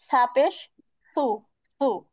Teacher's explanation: জিহ্বার আগাটা সামনের উপরের দুই দাঁতের আগার সঙ্গে লাগবে, নরম করে বলতে হবে।